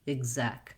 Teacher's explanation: So in executive, it's voiced, G sound, lax I sound because it's short and unstressed.